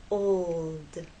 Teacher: l sound you must keep it pressed against that bump and there should be vibration the whole time from the o to the L and finally into the D